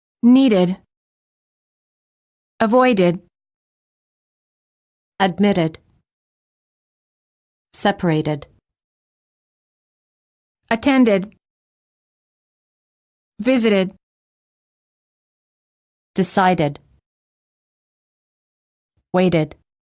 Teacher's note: If the last letter of the word is spelled with a D or a T, the ED is pronounced as a separate syllable, id.